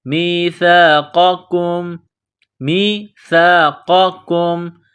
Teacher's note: قاف کو موٹا کرنا ہے، اس کاف کو باریک کریں گے